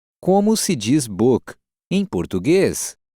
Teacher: Note the rising intonation of the sentence to mark that it's a question.